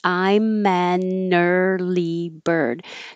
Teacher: this all connects i'm mannerly bird so it will really sound like i'm a nerly bird and now it sounds like